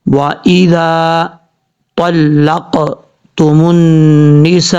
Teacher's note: یہاں پر نون کے اوپر شد ہے، غنہ کریں گے ایک الف کی مقدار۔ اب اس کے بعد سین کے آگے جو الف ہے، الف کے اوپر مد ہے۔